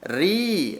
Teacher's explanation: ro tarkik, ro yang dibaca tipis. Ri, ro kasrah bertemu dengan ya sukun.